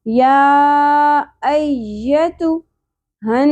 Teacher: नून मुशद्दद आ गया, गुन्ना होगा, आवाज़ को नाक में ठहराना है।